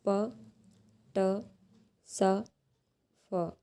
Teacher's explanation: जब आप ये साउंड को प्रोड्यूस करते हो ना, प ट स फ, इनको जब हम प्रोड्यूस करते हैं तो इसमें किसी तरह का कोई वाइब्रेशन फील नहीं होता है। It means these are the voiceless sounds.